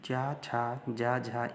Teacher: जब आप मुख से ये वर्ण बोलेंगे तो आपकी ज़बान ऊपर की ओर तालु से स्पर्श करेगी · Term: तालव्य